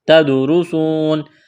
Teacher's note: تدرسون، تا دال زبر تد، دال ساکن ہے، قلقلہ کریں گے دال پر، را کو موٹا کرنا ہے، را کے اوپر پیش ہے، سین واو پیش سو، واو مدہ ہے، ایک الف کے برابر کھینچنا ہے، نون زبر نا، یہاں جب وقف کریں گے تو نون کو ساکن کریں گے۔